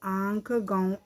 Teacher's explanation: जिन वर्णों के उच्चारण में हवा नाक और मुंह दोनों से निकलती है उन्हें अनुनासिक कहते हैं